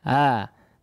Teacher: seolah kita ingin mengucapkan Hamzah tapi tidak sampai rapat ya pangkal tenggorokannya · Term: tashil